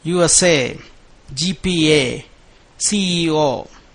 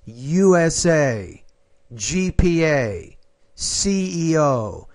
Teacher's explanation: put equal emphasis on all the letters